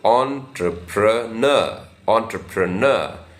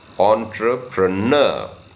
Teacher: in this on has a slight stress so entrepreneur entrepreneur uh the primary stress is on the last syllable